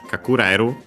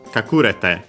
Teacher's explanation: kakureru on the re, kakurete for the te form on the ku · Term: accent